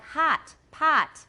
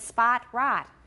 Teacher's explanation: H-O-T in American is the ah sound.